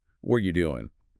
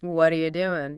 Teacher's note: Notice how the T in what often blends with the A and R, sometimes sounding like a soft D